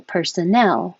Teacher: the stress is on the last syllable